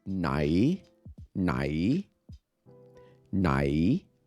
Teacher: rising tone nai, nai means which